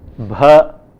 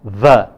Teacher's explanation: They must learn to distinguish them by being aware of the fact that one of them is bilabial bh and the other is a labiodental v. One of them is a plosive bh and the other is a fricative v.